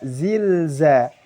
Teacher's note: Lam sukun lagi apabila bertemu dengan huruf zai maka harus dibaca jelas. Kemudian perhatikan juga sifatnya tidak boleh lam itu terlalu dialirkan, juga tidak boleh terlalu ditahan.